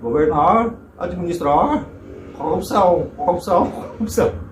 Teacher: Lembra um pouco o caipira aqui de São Paulo, né? Com aquele R retroflexo